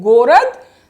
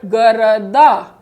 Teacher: Город, the stress is on the first O. But in plural, города. Stress is shifting to the last vowel A.